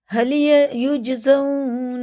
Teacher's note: جی میں قلقلہ ہے، سخت پڑھا جاتا ہے